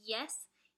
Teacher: is a palatal sound because your tongue glides across your palate when you say the Y sound.